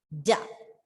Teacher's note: So when you pronounce a letter da or make the sound, you can feel the tip of your tongue just touching the back of your upper teeth